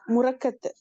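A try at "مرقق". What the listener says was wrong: முரக்கத் இல்ல, முரக்கக்.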